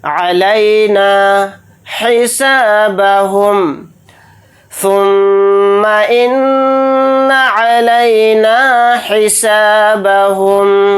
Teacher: میم کے اوپر تشدید ہے تو میم میں بھی غنہ کریں گے، نون کے اوپر تشدید ہے تو نون میں بھی غنہ کر کے پڑھیں گے